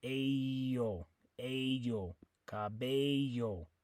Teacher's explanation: The double L in most Spanish-speaking countries is going to sound like a Y. It's like the letter Y in the word you.